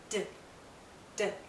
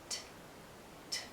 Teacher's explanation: T is unvoiced, voiceless, no sound.